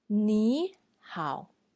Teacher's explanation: when we see two tone three are together the first tone three will be changed as tone 2 therefore we don't say ni hao instead we say ni hao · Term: rule of tone change